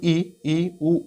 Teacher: जैसे हम ई, उ बोलते हैं तो हमारा मुख द्वार बंद रहता है, नहीं खुलता है ऊपर की ओर, इसे बोलते हैं संवृत या क्लोज।